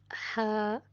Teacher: خلق کے درمیانہ حصے سے ح ادا ہوتا ہے